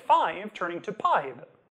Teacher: Closing the lips entirely is pretty easy, too, so your [f]s and [v]s will turn into bilabials · the voiceless f stays voiceless in p, but the voiced v becomes a voiced b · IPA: [fajv] turning to [pajb]